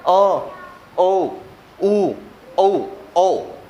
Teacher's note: उच्चारण जीभ के पीछे वाले भाग से किया जा रहा है। ठीक है, जीभ के पीछे वाले, जहां से जीभ शुरू हो रही है, उसके हिसाब से किया जा रहा है अ, ओ, उ, औ।